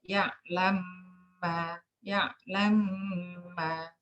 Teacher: Jadi dhamma mem pertama itu betul-betul hilang. Jadi langsung masuk mem kedua dengan tasydid, berarti dengung 2 harokat. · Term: idgham